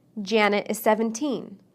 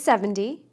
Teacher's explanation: we stress teens on the second syllable and tens on the first